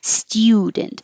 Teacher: don't let your tongue get too high and make a u student keep your tongue lower